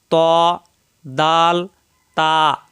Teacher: জিহ্বার আগার পিঠ উপরের তালের সঙ্গে লাগাইয়া র 11 নাম্বার মাখরাজ জিহ্বার আগা উপরের দুই দাঁতের গোড়ার সঙ্গে লাগাইয়া শক্ত করে উচ্চারণ